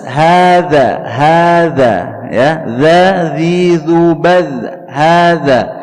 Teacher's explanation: huruf dzal, ya, tempat keluarnya di ujung lidah bertemu dengan ujung gigi seri atas